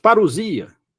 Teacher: não existe o ou em si você não vai falar ou você vai falar u